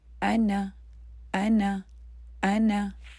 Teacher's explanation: حمزہ کو بھی ایک کاؤنٹ ہی پڑھنا ہے اور نون کو بھی ایک ہی کاؤنٹ پڑھنا ہے